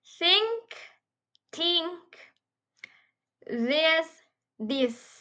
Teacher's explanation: Both consonants are dental fricative, meaning tip or breadth of the tongue touches the upper teeth.